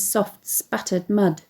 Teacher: onomatopoeic sibilant alliteration in the phrase soft sputtered mud the hissing s sound added to the plosive sound present in